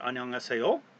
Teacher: rising intonation, a rising tone for a question